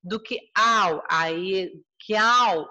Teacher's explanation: eu já tenho uma elisão, que é essa coincidência entre duas vogais